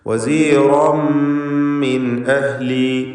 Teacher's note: തൻവീനിനെ ശേഷമുള്ള മീമിൽ പൂർണ്ണമായും ലയിപ്പിച്ച് വസീറൻ മിൻ എന്ന് ഇദ്ഗാം ബിഗുന്ന കാമിൽ ചെയ്ത് മണിക്കുക. മിൻ അഹ്ലി സാക്കിനത്തായ നൂനും ശേഷം ഹംസയും ഇൽഹാർ ഹൽക്കി ചെയ്ത് മണിക്കാതെ വെളിവാക്കുക